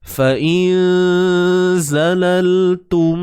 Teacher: Tak perlu keluarkan hujung lidah sebab ni huruf zai tuan-tuan dan puan. Dia bukan huruf zal.